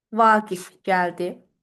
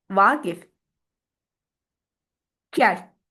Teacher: xitab rolunda işlənərkən sözün vurğusu adətən bir heca əvvələ keçir